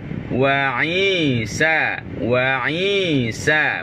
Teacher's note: Sa, pastikan lidah kita rata ke bahagian bawah.